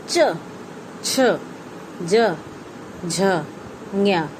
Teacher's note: इन 5 शब्दों को तालव्य कहा जाता है क्योंकि इसका उच्चारण करते समय जीभ तालु को महसूस करेगी